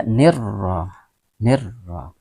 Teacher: Maka cara membacanya dimasukkan atau ditasydidkan ke dalam ra itu alif lamnya seolah-olah tidak dibaca atau tidak ada. Maka dibaca nirra, nirra. · Maka dibaca nirra, nirra. Ra dengan baris fathah maka dibaca tebal atau tafkhim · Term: Alif lam syamsiah